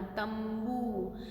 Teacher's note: ब के पंचम वर्ण में कौन है? प, फ, ब, भ, म, तो म का साउंड करना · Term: अनुस्वार